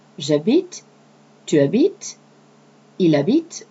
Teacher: J'habite, where you can put the apostrophe between the je as personal pronoun and habite, okay, starting with an H, which in French is considered silent as a vowel, is not pronounced